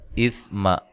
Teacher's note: سا کو نرم ادا کرنا ہے، لمبا نہیں کرنا میم کو